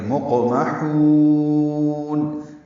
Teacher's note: میم کو جلدی سے پڑھیں گے اور ہا کو وسط حلق سے نکال کر لمبا کریں گے. مقمحون یعنی مقمحون نہیں پڑھنا، مقمحون لمبا کریں گے.